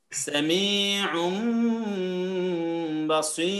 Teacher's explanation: নুন সাকিন বা তানভীনকে মিমে পরিবর্তন করে পড়বেন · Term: ইকলাব